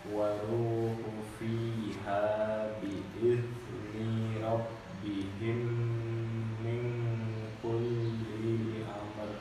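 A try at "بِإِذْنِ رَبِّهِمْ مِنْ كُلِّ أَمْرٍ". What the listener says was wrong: Cuma hati-hati ya, yang pendek-pendeknya jangan dipanjang-panjangin ya. Bi'izni, linya pendek ya. Kulli, linya pendek.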